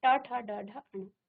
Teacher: ट वर्ग के जो आपके वर्ण हैं उनका उच्चारण करने में जहां आपकी जीभ क्या कर रही है, टच कर रही है, वहां पर आपका वो मूर्धा स्थान है